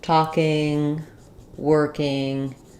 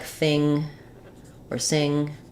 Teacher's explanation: Also a question about whether we can reduce ing at the ends of words. So typically for most verbs, talking, working, words like thing or sing, we use the full ng sound.